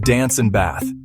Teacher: Think of dance and bath. In America, they share a flat vowel. Southern Britain lengthened one of them.